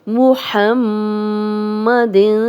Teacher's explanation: ہا کی کلیئر آواز آئے، میم پہ شد ہے، غنہ کریں گے